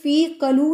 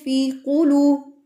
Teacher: قو کی آواز آئے گی، ہونٹوں کو گول کر لینا ہے، اور قو کی آواز، قلو نہیں پڑھنا ہے اس کو.